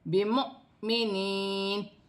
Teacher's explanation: میم ساکن کے بعد با آری ہے، اخفا مال غنہ کا قاعدہ ہے، واو خالی ہے، حمزہ پر جزم کی حرکت ہے، حمزہ کو جھٹکے کے ساتھ پڑھا جائے گا